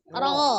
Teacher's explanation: Kalau huruf ro ketika dia fathah dia dibaca tebal, tapi caranya bukan dengan menaikkan pangkal lidah ya, karena sifat huruf ro adalah istifal.